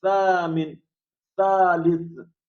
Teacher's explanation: سا کی آواز جو ہے نو کے زبان تھوڑا سا اوپر والے دانت سے باہر نکلتے ہوئے اور اس کی آواز نکلتی ہے